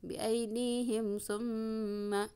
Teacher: idhar syafawi. Jelas di bibir. Mim sukun ketemu dengan sa ya.